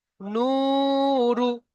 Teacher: নুন ওয়াও পেশ নু, ওয়াও সাকিনের ডান দিকে পেশ এসে তাকে ওয়াও মাদ্দা বলা হয়। ওয়াও মাদ্দাকে একালিফ পরিমাণ টান দিয়ে পড়তে হয়।